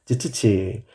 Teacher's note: 파열음과 마찰음 이 섞여 있는 소리 를 파찰음 이라 고 합니다